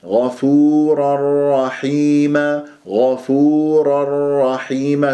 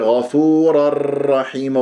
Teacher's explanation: صارت الشدة على راء رحيمة لأنه فيها إدغام بغير غنة من غير تكرار، تكرير يعني تكرير، غفورا رحيمة، وأخفي تكريرا إذا تشدد، فانتبهوا.